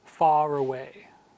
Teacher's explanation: So in British English, like the American pronunciation far away, the R returns.